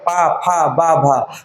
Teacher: ओष्ठ वाला देखो ओठ टच होंगे दोनों